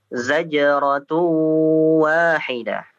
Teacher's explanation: Untuk yang tanwin dimasukkan ke huruf wawu